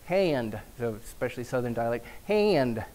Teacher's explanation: So it's nasalized, and you've got that drawl, the diphthongization, triphthong, or glide, a schwa glide, or something, an extra vowel glide.